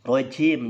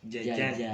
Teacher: huruf jim itu jangan ada desisnya, jangan rojim, jangan.